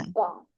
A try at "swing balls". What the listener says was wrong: However, so since the word has letter S at the end, so don't forget highlighting the S sound. Swing balls.